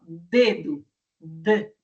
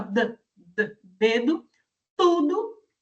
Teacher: a ponta da nossa língua se encosta atrás do nosso dente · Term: dental alveular